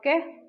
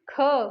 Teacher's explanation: जिनको बोलने में कम समय लगता है क तो हो गया आपका अल्पप्राण ख उसको बोलने में अधिक समय लगा तो आपका महाप्राण